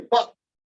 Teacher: The pop in popcorn, the second one, where we don't really say pop, we just say pop and never finish it off. That's different.